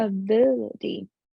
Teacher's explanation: you take the tip of your tongue and you touch very quickly where you make the T sound so it's in the middle between a t sound and a D sound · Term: flap T sound